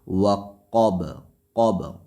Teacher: وقب، قب، قاف موٹا حرف ہے، با پہ قلقلہ ہوگا، اس لیے وقف کی صورت میں با ساکن ہے